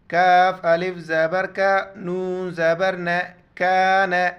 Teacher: कान, छोटी काफ है, बारीक पढ़ेंगे